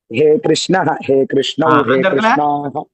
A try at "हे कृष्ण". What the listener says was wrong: அந்த இடத்துல அந்த விசர்க்கத்தை மட்டும் எடுத்துருங்க. हे कृष्ण, हे कृष्णौ,